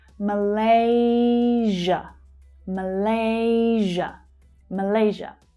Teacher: And just like 'Indonesia', you'll hear the /ʒ/ consonant sound.